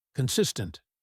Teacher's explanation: The stress is on the second syllable. Consis tent.